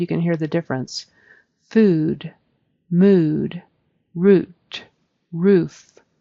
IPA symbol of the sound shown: u